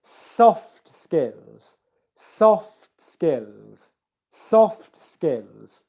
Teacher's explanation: The stress is on the first syllable here